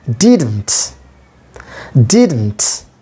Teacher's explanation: in the first syllable a primary stressor main stress is given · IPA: /ˈdɪdnt/